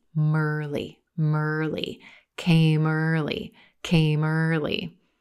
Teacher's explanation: That final M sound at the end of came, linking and connecting into the word early.